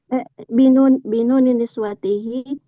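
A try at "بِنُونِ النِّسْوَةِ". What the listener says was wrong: Nggak ada hi-nya.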